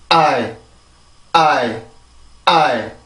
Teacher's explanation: 아에서 성대가 풀리면서 그냥 소리의 흔적만 남겨주는 거예요. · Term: 이중모음